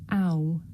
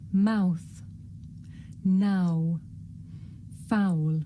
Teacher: This is a diphthong, a double vowel sound. The shape the mouth makes changes from the beginning of the sound to the end. It's pronounced ow.